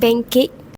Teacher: regressive assimilation where the alveolar nasal n changes to the velar nasal ng due to influence of the following velar sound of k. This shift helps ease articulation and is a common feature in natural speech.